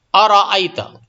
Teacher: تو ارأیت، اس میں را کو موٹا کریں گے، جیسا کہ میں بار بار بتا چکا ہوں کہ را کے اوپر اگر زبر یا پیش ہو تو را پر ہوگی، یعنی را میں تفخیم ہوگی، تھوڑا موٹا کر کے پڑھیں گے